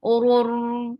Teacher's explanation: This is idgham and there is no gunna. Oror ra and give the wasut on ra.